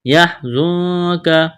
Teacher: زا میں سیٹی کی آواز پیدا کریں گے. نون ساکن کے بعد کاف ہے، یہاں پر اخفا کریں گے، آواز ناک میں چھپائیں گے.